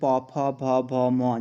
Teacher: अगर आप प वर्ग की बात करें तो जब आप इनको उच्चारण करोगे तो आपके ओंठ आपस में मिलेंगे